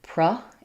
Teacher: This purra is very fast, so inseparable, you might hear it like pra in some speakers, reducing those two syllables down to one.